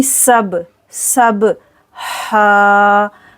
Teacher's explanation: با پر کریں گے قلقلہ، سین میں سیٹی آئے گی سب، سب ہا، حلق کے درمیان سے ہا